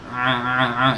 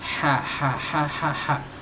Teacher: Nah, ain sampai nempel, H itu enggak.